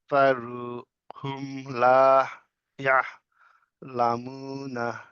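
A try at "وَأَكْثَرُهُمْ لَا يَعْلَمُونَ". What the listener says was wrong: আচ্ছা লাখ থারু কেন হলো ওটা তো হামজা না এই যে এইটা শুরুতে এই যে এই দেখাই এটা লাখ বলছে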